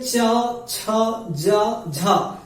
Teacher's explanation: जब हम चा, छा, जा, झा का उच्चारण करते हैं तो जो हमारी तालु है ये थोड़ा संघर्ष करती है। आप बोल करके देखना, ये जैसे संघर्ष का मतलब क्या होता है, रगड़ना होता है। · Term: स्पर्श संघर्षी वर्ण